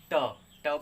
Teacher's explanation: मूर्धन्य, जीभ को फोल्ड किया जाएगा ऊपर से, तो जैसे ट, ट बोलेंगे तो जीभ ऐसे ऊपर की तरफ तालु को छूते हुए मुड़ जाता